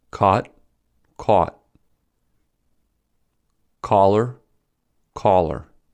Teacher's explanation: Due to the merger, in standard American English, these words are homophones. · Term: caught merger